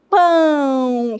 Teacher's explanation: Quando você fala o o a sai forte, pão. E esse o escrito como o, mas na pronúncia sai como u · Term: semivogal